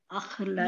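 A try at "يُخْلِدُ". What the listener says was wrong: या के ऊपर पेश लगा बाबे फाल जो फेल मुदारे में जाता है तो हमेशा पेश से शुरू होगा उसके आइन कलिमा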